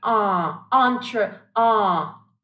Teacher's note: it's the same ah sound very open very wide